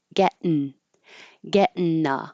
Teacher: instead of ing, I'm going to make it n.